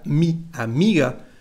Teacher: l'accent tonique ne porte pas sur le a il porte sur la deuxième syllabe